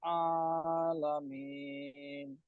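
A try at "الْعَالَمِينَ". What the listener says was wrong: এখানে আটা একটু ভালো করে উচ্চারণ করতে হবে, আলামিন। না, এটা তো হয়ে গেল, মানে হামজার উচ্চারণ হয়ে গেল। আর উচ্চারণ আলাদা। আটা হবে একদম ভিতর থেকে, গলার একেবারে ভিতর থেকে। আলামিন।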